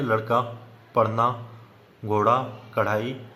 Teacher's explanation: उछित व्यंजन जिन वर्णों का उच्चारण करते समय जीव को ऊपर उठाकर के झटका देकर नीचे फेंका जाता है उन्हें उत्क्षिप्त व्यंजन या द्विगुण व्यंजन कहते हैं